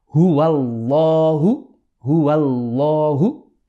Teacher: Only the lam of the word Allah will become heavy.